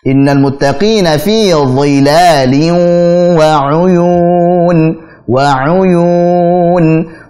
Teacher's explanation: Jadi fi dhilali, pakai dha, fi dhi tebalkan. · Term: huruf dha